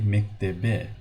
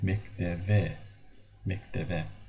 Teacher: when we have b in the middle or at the end of the word, we read it as a v